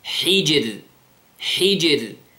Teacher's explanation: Notice the sound, the qalqala of the jim, and then the lightness of the ra.